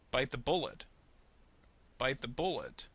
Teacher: bite is going to receive a little bit of stress and then bullet is going to receive intonation and then bullets